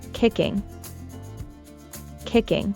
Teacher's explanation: for kicking, we'd stress on the first syllable.